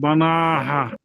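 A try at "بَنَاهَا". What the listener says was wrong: হ্যাঁ বান্না, আপনি যেটা প্রথমে বলছিলেন যদি আলিফটা না থাকতো, এই যে এই আলিফটা না থাকতো তাহলে বানাহ হতো, এখন টান হবে বানাহা।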